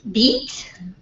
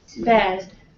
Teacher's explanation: to feel how the tongue goes from high to Mid